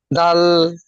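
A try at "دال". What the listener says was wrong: এটা এই টানটি আপনার মাঝখানে দিতে হবে, এই দ এবং ল আছে, এর মাঝখানে টানটি দিতে হবে। দাল। তিন আলিফ টান।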